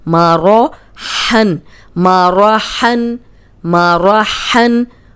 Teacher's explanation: अब रॉ को मोटा रखेंगे क्योंकि ज़बर आ गई है